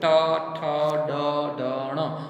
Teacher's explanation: તમે ઉપર જીભ અડાડીને વાળવી પડે છે એટલે એને મૂર્ધન્ય કહેવાય